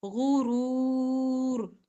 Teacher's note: را پر جب وقف کریں گے تو را کی زیر نہیں پڑھیں گے